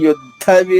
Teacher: రెండు దాలు కానీ వేరు వేరు దాలు ఒకటి ఒత్తు లేకుండా అల్ప ప్రాణము రెండవది ఒత్తుతో మహాప్రాణము